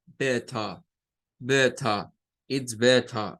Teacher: Y no va a sonar la R al final, la va a eliminar. Y entonces nos va a decir better, con el sonido de la T, pero al final el schwa, better, better, it's better, es mejor, it's better.